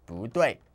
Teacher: And like before, 不 changes its tone from fourth tone to second tone.